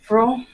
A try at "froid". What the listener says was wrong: fro nahi hai. It's O plus I combined sound, remember? Wa, wa. So it's froid.